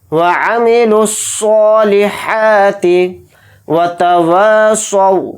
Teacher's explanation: वाव के साथ अलिफ मद्दा है तो वाव अलिफ ज़बर वा थोड़ा खींच कर पढ़ेंगे। स्वाद वाव ज़बर सौ, इसको नहीं खींचेंगे क्योंकि वहाँ पर वाव लीन है, तो वाव लीन को जल्दी पढ़ेंगे।